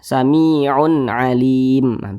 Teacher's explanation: Maka cara membacanya dibaca jelas, tidak berdengung. Jadi baca pendek saja. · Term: izhar halqi